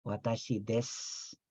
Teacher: en ocasiones las U finales no se mencionan, ¿sí? Watashi des, ahí en realidad se está escribiendo desu, pero solamente se dice des. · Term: mudas